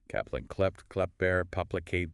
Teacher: So rapidly switching between making a stop at the back of your mouth, then shifting to L, and then making a stop with your lips and shifting to L, plus dealing with the extra P as in paplicate.